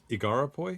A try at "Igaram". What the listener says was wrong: Yeah, he's got a longer, more complicated name, but as we learn later, we can just call him Igaram. Igaram.